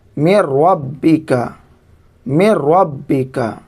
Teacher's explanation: اب یہاں پر یہ نون ساکن ہے، نون ساکن کو را میں ادغام کر دیں گے، ملا دیں گے۔ بغیر گنہ کے. میم نون را زیر میرو، را با زبر رب، میر رب با زیر بے، میر ربی، کاف زبر کا، میر ربی کا، میر ربی کا. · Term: ادغام بلا گنہ